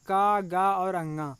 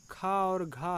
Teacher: और अल्पप्राण के लिए 1, 3, 5 नियम अपनाएंगे दोस्तों। मतलब का, गा और अंगा ये हैं अल्पप्राण और खा और घा है ये महाप्राण है।